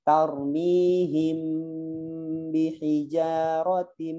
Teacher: karena ba sama ma ini adalah satu makhraj. Di mana? Di bibir. Jadi makanya bacanya rapat. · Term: ikhfa syafawi dirapatkan